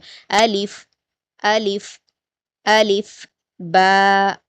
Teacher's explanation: अलीिफ जो होता है वह मुंह के खाली हिस्से से अदा होता है। यानी आपको किसी मुंह के किसी हिस्से को टच करने की जरूरत नहीं पड़ेगी।